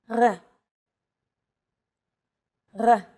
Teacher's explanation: be fooled this letter is pronounced differently than an English R it's pronounced at the back of the throat instead of forward in the mouth · It's actually closer to the German or French R, but without the roll.